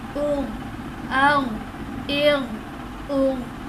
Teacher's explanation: اب خا اور غین حرف مستعلیہ میں سے ہیں اس لیے انہیں پر پڑھا گیا